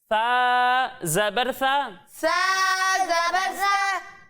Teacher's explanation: जब हम सा की अदायगी करेंगे तो इसमें सीटी की आवाज ही नहीं आएगी